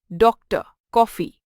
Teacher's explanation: इसे आ तथा ओ के बीच की ध्वनि से बोला जाता है।